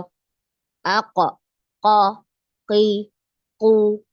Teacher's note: makhrajnya keluar dari pangkal lidah dan langit langit atas yang lunak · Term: huruf q, huruf qaf